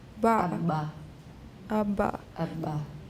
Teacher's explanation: air is coming in to make it an implosive